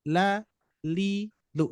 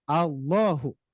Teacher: ketika kita membaca lafdzul zalalah, apalagi tabkhim yang dibaca tebal, maka yang asalnya la menjadi lo